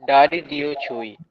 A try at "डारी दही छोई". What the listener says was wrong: डारी दही है बेटा, है ना? डारी दही छोई। आपके सामने दही लिखा है, आप लेकिन उसको दियो पढ़ रहे हो, तो करेक्शन तो मुझे करना पड़ेगा, है ना?